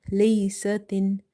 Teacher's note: You have to hold the noon sound by doing gunna here.